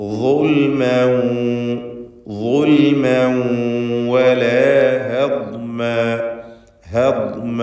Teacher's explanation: അതേപോലെ ഹദ്മ എന്ന് പറയുമ്പോൾ ദ്വാദ് ഇസ്തിഅലാഇൻ്റെ 7 അക്ഷരങ്ങളിൽപ്പെട്ടതാണെങ്കിലും രണ്ടും തമ്മിൽ മഖ്റജിൽ വളരെ വലിയ അന്തരമാണ്. ദ്വാദ് നാവിൻ്റെ സൈഡിൽ നീളത്തിൽ, അരുനീളത്തിൽ മേലെ അണപ്പല്ലുമായി ചേർത്തുകൊണ്ടാണ് ഉച്ചരിക്കേണ്ടത്.